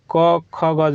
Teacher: क वर्ग का यह आपको कंठ से उच्चारण होता है